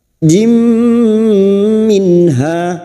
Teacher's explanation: Memasukkan dengan mendengung masuk pada huruf mim dan mendengung selama 3 harokat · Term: idgham bi gunnah